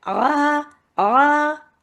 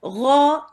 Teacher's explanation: आ ये बारीक है, गौ ये फिर पुर है, मोटा है। अक्सर इसको लोग मोटा कर देते हैं क्योंकि हलक से निकालना होता है, थोड़ा मुश्किल होती है, उस मुश्किल में उसको मोटा भी कर देते हैं, वो जो कि नहीं करना है, ठीक है, इसीलिए बहुत गौर से देखना है।